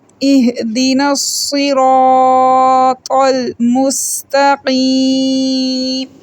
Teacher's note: سین سیٹی والا حروف ہے، قاف کو موٹا پڑھیں گے، یا مدہ ہے، 1 سیکنڈ کے لیے لمبا کریں گے۔